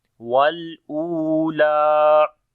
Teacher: U we long due to waw madda. Lam we long due to standing fatha here.